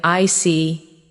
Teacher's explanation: When you show understanding with I see, your tone drops slightly to show calmness. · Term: Intonation